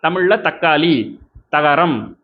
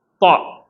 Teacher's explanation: ஆனா இது அப்படியானாக்க அப்படி கிடையாது. நாவினுடைய பிற்பகுதியை உயர்த்து ஹெவியா சொல்ல வேண்டிய த அப்படின்னு உச்சரிக்கணும்.